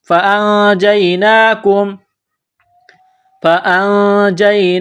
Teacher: نون ساکن پر غنہ کریں گے، آواز ناک میں چھپائیں گے